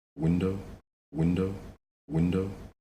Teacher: intonation clearly goes up in pitch window window window he's pausing but he's not done he has